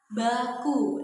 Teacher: Bunyi B ini teman-teman ya, dia termasuk ke dalam bunyi bersuara, karena pita suara kita itu bergetar ketika kita mengucapkan bunyi B